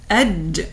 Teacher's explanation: harf al-jim has this characteristic of what we call infijar. Infijar means explosion.